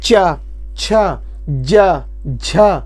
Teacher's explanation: चा, छ, ज, झ, या तालु में लग रहे हैं, इसीलिए इसे तालव्य व्यंजन बोला जाता है।